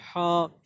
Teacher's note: हा जो है वो दरमियानी हलक से निकलता है, यानी हलक के हम तीन हिस्से करते हैं, एक मुंह की तरफ का, और एक दरमियानी हलक, और एक सीने की तरफ का।